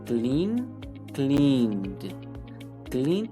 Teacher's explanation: termina el sonido de la n la n es un sonido sonoro